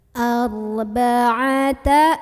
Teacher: Kebetulan huruf sebelumnya barisnya di atas, maka ro-nya tebal. Cara menebalkannya adalah pangkal lidah kita naikkan tanpa mengubah posisi makhraj dari huruf ro.